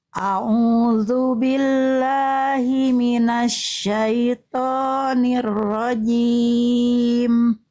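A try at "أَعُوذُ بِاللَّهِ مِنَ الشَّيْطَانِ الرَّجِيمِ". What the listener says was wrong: Tinggal tebal-tebalkan huruf tebalnya Bunda. Tinggal ditebalkan sedikit lagi. Pangkal lidahnya diangkat. A'udzu billahi minasyaitonir rajim.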